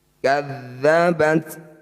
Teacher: harus mengeluarkan percikan udara ketika membaca ta sukun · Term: hams